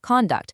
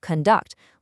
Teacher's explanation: Now, you have to beware of the special rule for the word conduct, because it actually changes based on how it's used. As a noun, the stress is at the front, conduct, like his conduct was excellent. But as a verb, the stress shifts to the back, conduct, like she will conduct the experiment.